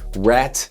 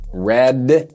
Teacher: the T has no voice and the D has some voice